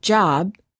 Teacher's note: say the word job we cannot continue the final B sound we stop the air flow by closing our lips therefore B is a stop